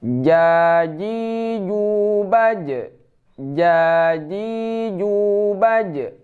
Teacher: cara membacanya di tengah lidah, tidak ada angin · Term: huruf ja